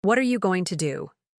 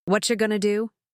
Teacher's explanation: Notice how what are you becomes what you completely. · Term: reduction